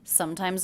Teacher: the ending s here is pronounced as a Z